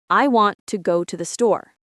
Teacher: In this sentence, want and store are strong. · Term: stress and rhythm